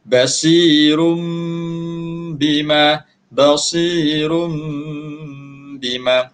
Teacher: menukarkan sebutan nun mati ataupun tanwin kepada huruf mim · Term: hukum iqlab